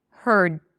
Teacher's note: I don't release the d